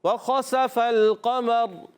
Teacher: را کا مخرج ہے زبان کا سرا و کنارہ اور ثنائے اور رباعی کے مسوڑوں سے یہ ادا ہوتا ہے · اس میں نوک زبان کو بھی دخل ہوتا ہے. وقف کریں گے تو را ساکن ہو جائے گا.